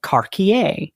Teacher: in Norman French, a C before an A remained a hard sound